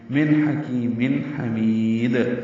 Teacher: میم کے نیچے تنوین ہے، 2 زیریں، اس کے بعد ہا آنے کی وجہ سے پھر اظہار ہے